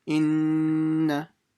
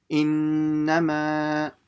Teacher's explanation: a mim mushaddada and a nun mushaddada must be read with a ghunna, which means you make a heavy sound from the nose for the duration of 2 haraka, or you can say 2 alifs.